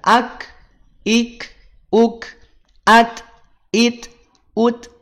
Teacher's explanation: Kaf dan juga ta. Kaf itu punya sifat syiddah, tidak mengalir suaranya. Terhenti suaranya.